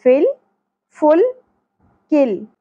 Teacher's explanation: فا کی زیر لام کے ساتھ جڑ جائے گی